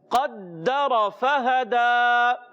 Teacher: دال کو رک کر ادا کریں گے تھوڑا سا اور را پر رہے گا موٹا ادا کریں گے کیونکہ زبر والا ہے · قاف حرف مستعلیہ موٹے حروف میں سے موٹا ادا کریں گے